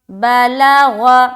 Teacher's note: با زبر با، لام زبر لا، غین زبر غ، بلغ، غین کو منہ بھر کر بولنا ہے، بلغ، با لام غین، تینوں کے اوپر زبر کی حرکت ہے، زبر کو جلدی پڑھیں، تھوڑا بھی نہ کھینچیں، جیسے بلغ۔